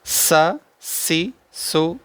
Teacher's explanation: حروف صفیریہ میں سے ہے سین، سیٹی کے ساتھ پڑھنا ہے